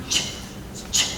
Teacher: So if I make the /ch/ sound, I'm starting out with some tension or some friction being caused, my airflow is a little bit blocked, but then all of a sudden it releases · It's restricted, and then poof, it just punches out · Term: affricate sounds